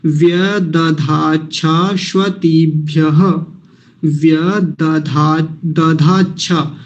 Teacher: दधाच्छा जो है कई बार गलती हो जाती है, ददाच्छा बोल देते हैं, यानी अल्प प्राण महाप्राण